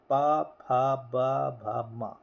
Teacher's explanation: हमारे जो ओठ है दोनों ओष्ठ टकराते हैं। पा फा बिना ओष्ठ के कुछ नहीं हो सकता।